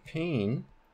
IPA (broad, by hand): peɪn